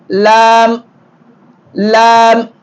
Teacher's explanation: நுனினாக்கு மேல் மேல்முரசோடு இணைகிற பொழுது லாம் லாம்